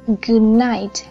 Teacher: n ở đây của từ night sẽ làm biến đổi d ở đằng trước để biến nó thành một âm mũi luôn, sẽ dễ đọc hơn. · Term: assimilation of manner